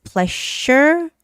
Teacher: Pleasure, that's the voiced sound of the SH sound